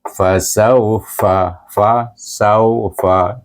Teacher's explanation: Jadi kita gabungkan sin dengan waw bunyinya saw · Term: lin